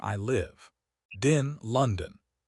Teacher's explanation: You are listening for lived, but we are hiding the D in the next word.